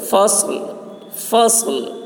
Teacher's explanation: صاد کی آواز سخت ہوگی اور لام ظاہر ہوگا ٹھہرتے وقت